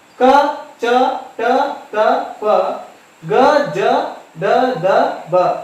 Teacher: ಹೇಳಿ ವಿಂಗಡಿಸಿದ್ದಾರೆ ಅಲ್ಪಪ್ರಾಣ ಅಂತಂದ್ರೆ ಇಲ್ಲಿ ಅಲ್ಪ ಅಂತಂದ್ರೆ ಕಡಿಮೆ ಪ್ರಾಣ ಅಂತಂದ್ರೆ ಉಸಿರು ಕಡಿಮೆ ಉಸಿರಿನಲ್ಲಿ ಉಚ್ಚರಿಸಲ್ಪಡುವಂತಹ ಅಕ್ಷರಗಳಿಗೆ ನಾವು ಅಲ್ಪಪ್ರಾಣಗಳು ಅಂತ ಹೇಳಿ ಕರೀತೇವೆ